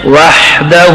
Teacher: وحدہ میں جو لوگ غلطی کرتے ہیں تو ہا کو جگہ ہا کی جگہ ہا پڑھتے ہیں وحدہ, یہ غلط ہے. ہا کو درمیان حلق میں پڑھیں